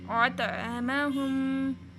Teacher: کلکلا کا مطلب یہ ہے کہ اس میں تھوڑا سا جھٹکا بھی دیں گے توئیں پہ ، اطعمہم۔ اچھا، اب اس میں یہ اگلا جو ورڈ ہے